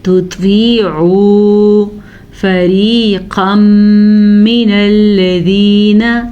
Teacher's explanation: اگر اس کو بھی ہم تا پڑھیں گے تو یہی بن جائے گا تطیعوا فریقا من الذین. ادغام بالغنہ ہے کیونکہ تنوین کے بعد یمون میں سے میم آیا ہوا ہے · را کو باریک پڑھیں گے, را زیر کی وجہ سے باریک پڑھی جائے